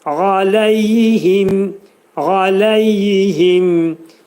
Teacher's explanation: A hərfi boğazın ortasından çıxarır.